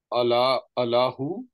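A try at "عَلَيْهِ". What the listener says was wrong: No, there is ya. Alayhi.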